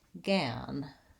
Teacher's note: the clear vowel on our stressed syllable is the vowel a, like in black cat · I'm going to hold that vowel longer, and that's my longest stressed syllable